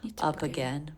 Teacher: here we have an ending consonant linking into a beginning vowel